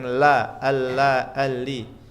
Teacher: Kalau kita rasakan kita mengatakan la all alla itu lidahnya seperti miring ke ee ke atas alla. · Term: al-inhiraf